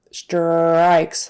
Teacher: like the American R, your tongue goes back, and the tip of your tongue doesn't do anything at all. But she's using more like the tip of her tongue in the front of her mouth.